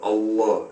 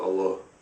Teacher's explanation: The difference is mainly the elongation of the L, Allah, as opposed to Allah.